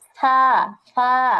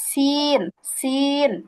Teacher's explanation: সা, সা নরম করে, আর সিন, সিন একটু চিকন চিকন, মানে পাখির মতো একটা চিকন চিকন, কণ্ঠটা চিকন হয়ে যাবে।